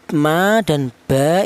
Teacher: Sementara huruf ba dan huruf mim ini dihasilkan dari kedua bibir yang rapat. Jadi kita bilang ma dan ba itu bibir kita rapat dulu ya.